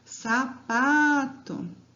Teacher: Qual que é a sílaba tônica de sapato? É o pá.